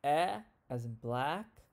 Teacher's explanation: it's the lowest front vowel